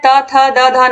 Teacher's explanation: त वर्ग का उच्चारण स्थान क्या है त थ द ध न तो त वर्ग यानी कि यहां पर हो जाएगा दंत